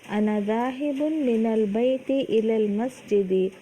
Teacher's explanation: देखिए मिन के नून साकिन के बाद लामे साकिन है ना यहाँ पर, तो मिन के नून साकिन को ज़ेर नहीं दिया, ज़बर देकर आगे मिलाया है ना